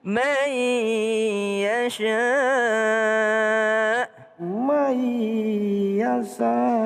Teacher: ada nun ketemu dengan ya berdengung